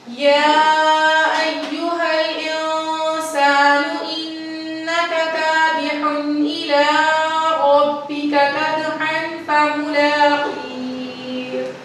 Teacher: کھڑی زبر کو ہم 1 الف کے برابر لمبا کرتے ہیں